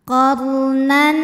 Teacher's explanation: huruf ro sukun dibunyikan secara tafkim karena harakat huruf sebelumnya fathah maka rnya ditebalkan · Huruf ra sukun dibunyikan secara tafkhim, karena harokat huruf sebelumnya fathah, maka ra-nya ditebalkan. Qarnan, nan ada hukum idhar halqi, karena ada tanwin fathah menghadapi huruf halqi atau huruf tenggorokan, yaitu hamzah, maka tanwin kita bunyikan dengan n jelas.